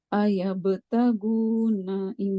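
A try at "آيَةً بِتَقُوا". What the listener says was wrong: Ayah betagu. Jangan tagu. Jangan tagu kayak go bahasa Indonesia. Tagu. Ujung tenggorokan. Ayah betagu.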